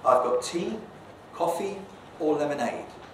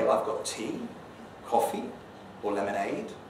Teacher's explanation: they are the three things i've got because the fall signals completeness